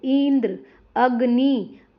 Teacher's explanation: इ और अ पर ज्यादा जोर दिया जाता है। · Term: बलाघात